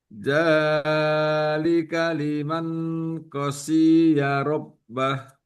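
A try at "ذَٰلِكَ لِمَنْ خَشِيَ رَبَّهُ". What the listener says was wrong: lihat panjangnya, khasyiya rabbah. Lihat panjang pendeknya, pelan-pelan saja untuk memperhatikan panjang pendeknya, ya.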